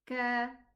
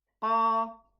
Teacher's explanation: If I do not elevate the qaf in my pronunciation, it's going to be a kaf. I'm going to say ka, but it's qa.